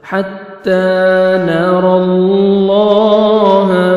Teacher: لام کو آپ نے باریک نہیں کرنا، لام کو پر بھی کرنا ہے، موٹا بھی کرنا ہے، اور 1 سیکنڈ کھینچنا ہے